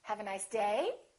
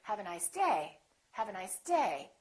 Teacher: I'm still going to emphasize the word day but I'm not going to make my pitch go up